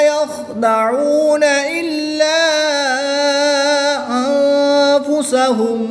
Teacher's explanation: اس چھوٹی مد میں مد منفصل ہوگی، یعنی کہ الف مدہ کے بعد حمزہ دوسرے کلمے میں آ گیا تو یہاں پر 2 اڑھائی الف تک کھینچ کر پڑھیں گے